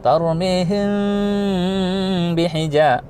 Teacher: Kalau ikhfa syafawi, mim mati bertemu huruf ba. Maka dibaca menjadi samar dengung. Itu disebut dengan ikhfa syafawi. Disamarkan dulu, ya. Kemudian didengungkan.